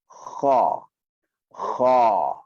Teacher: bila sebut kha, macam kita nak buang sesuatu daripada tekak, dan pada masa yang sama lidah, pangkal lidah kita naik ke atas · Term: huruf tebal terbuka